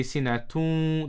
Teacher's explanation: the tanween has joined completely, but the ghunna has remained. So we say sinatun, that tun sound is the ghunna sound, not the tanween.